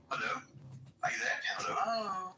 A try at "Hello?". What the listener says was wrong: No, you're still saying it too polite. You're saying it like this. Hello? Hello? You got to say it. Hello? Hello?